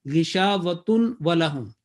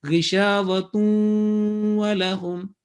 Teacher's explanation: That will be wrong, because after tanween, if the waw comes or ya comes or noon comes or waw comes, yanmu or ya noon mim waw or yumin ya waw mim noon, these four letters, then assimilation, the joining will take place with gunna sound, 2-second gunna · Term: assimilation with nasal sound